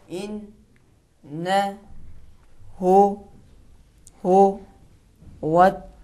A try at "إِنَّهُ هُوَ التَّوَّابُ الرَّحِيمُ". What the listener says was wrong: اگر تھوڑا سا کھینچیں گے ہو تو غلط ہوگا پڑھیں ہو